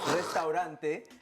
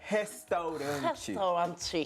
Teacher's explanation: instead of the rolled R sound, which would be restaurante, they change it to like an H